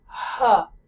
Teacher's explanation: this breathable H sound, H, does not exist in French.